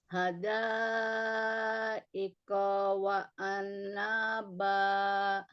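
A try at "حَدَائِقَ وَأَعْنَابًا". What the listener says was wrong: Nya jangan panjang. Hadaika, nggak boleh.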